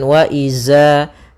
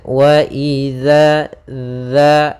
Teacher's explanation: Pada bacaan wa idza di sini ada mad tabi'i, yaitu adanya fathah bertemu alif. Hati-hati dalam melafalkan huruf zal. Di sini jangan dibaca zai gitu ya.